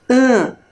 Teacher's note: não tem som aberto Nem som fechado é um som que sai como se fosse pelo nosso nariz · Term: som nasal